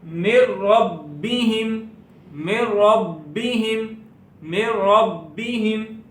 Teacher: اب ہم نے پڑھا تھا کہ را میں گنہ کر کے نہیں پڑھتے، تو لہذا یہاں پر گنہ نہیں ہوگا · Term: ادغام